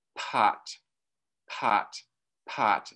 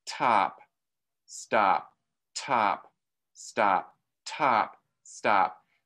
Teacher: the p had a big puff of air